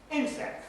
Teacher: The primary lexical stress is on the first syllable. That's what the little tick means in front of that.